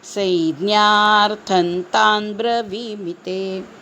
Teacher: संज्ञार्थं थवर अनुस्वार आहे त्या अनुस्वारापुढे त आला आहे म्हणून न करायचा आहे त्याचा